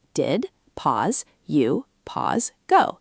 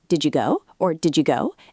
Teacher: The D at the end of did and the Y sound at the beginning of you blend. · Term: connected speech